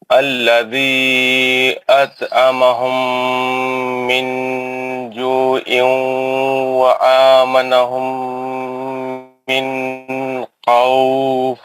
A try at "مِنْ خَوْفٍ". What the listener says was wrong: من خوف، لمبا نہیں کرنا تھا، ہاں اظہار ہے نا، نون ساکن کے بعد خا گیا ہے نا، نون کو جلدی، من خوف۔ ویری گڈ، آپ قاعدے بتائیں گے؟